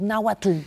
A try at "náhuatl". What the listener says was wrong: Está mal porque lo estás pronunciando en español. Entonces yo siempre decía, para la gente que nos escucha, cuando digan náhuatl, pongan arriba de la T, arriba una L chiquitita.